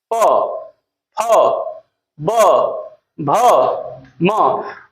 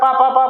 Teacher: आपके दोनों ओठ परस्पर चपक रहे हैं चिपक रहे हैं